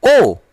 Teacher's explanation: ओ में ओठ हमारा जो है गोलाकार होता है।